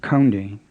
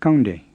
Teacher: it's not counting with an aspirated k like english and it's not gange with an english g it's kande with a plain k